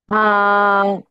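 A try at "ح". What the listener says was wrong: হা না, হা, গলাটা চেপে একালিপ টানে উচ্চারণ করব, মুখ দিয়ে হালকা বাতাস বের হতে হবে।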